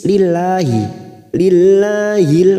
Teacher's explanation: lam jalalah yang didahului kasr kita baca tarqik kita baca tarqik tipis